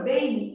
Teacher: Eu tenho um e funcionando como vogal e um I funcionando como semivogal mesmo que ele esteja representado pela letra M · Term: ditongo fonético